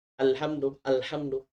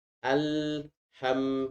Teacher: lam dan mim sama-sama mempunyai sifat tawassut atau sifat baini ya jadi dia mempunyai tempo baca yang tempo suara yang sedang